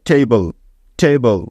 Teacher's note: তাহলে টে এবং বল একসাথে যোগ করলে হয়ে যাবে টেবল টেবল আমেরিকানরা এ এর উচ্চারণটা এই এর মত করে